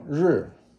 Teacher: it's a falling tone, fourth tone